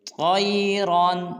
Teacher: طَيْرًا میں طا اور را کو پر ادا کریں گے